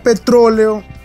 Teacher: Si sabemos que es un hiato y que las dos vocales abiertas deben ir en sílabas distintas, notaremos que al pronunciar petróleo, el acento está en la sílaba tro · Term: esdrújula